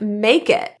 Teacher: In fluent speech, the T in it is pronounced like a glottle T. It sounds like the stopping of air in the throat. It's not a deletion.